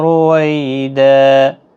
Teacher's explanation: دو زبر کو بدل کر ایک زبر کے ساتھ وقف کریں گے، الف مدہ بنے گا، ایک الف کی مقدار کے برابر کھینچ کر وقف کریں۔ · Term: وقف بالابدال